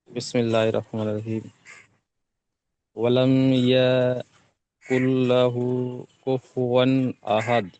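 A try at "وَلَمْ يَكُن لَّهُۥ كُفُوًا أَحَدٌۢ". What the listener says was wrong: ওয়ালাইয়া টান হয়েছে ইয়াবারই হারাকাত হারাকাতের পড়া তাড়াতাড়ি পড়তে হবে টান দেওয়া নিষেধ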